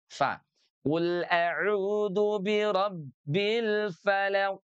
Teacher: Jadi bukan pa bukan bibir dengan bibir tapi ee apa namanya? Bibir bawah ini dengan gigi seri atas